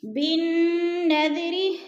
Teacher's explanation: نون مشدد ہے، غنہ سختی سے جما کر پڑھیں گے